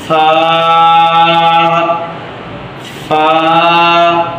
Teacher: নিচের ঠোঁটের পেট সামনের উপরে 2 দাঁতের আগার সাথে লাগিয়ে একটি হরফ উচ্চারিত হবে।